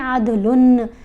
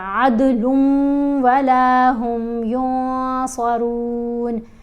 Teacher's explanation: جیسے یہاں پر ہم نے پڑھا نا عدلن نہیں پڑھا، اگر ہم پڑھتے ہیں عدلن، نون کی آواز ہے وہ ختم ہو گئی، لام کا اور واو کا ادغام ہو رہا ہے۔ ٹھیک ہے، لام کو واو سے ملائیں گے نا، یعنی ملاپ ہو رہا ہے، تو یہاں غنہ ہوگا عدل ولا ہم ینصرون۔